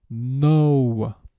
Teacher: almost sounds like you're going from O to U.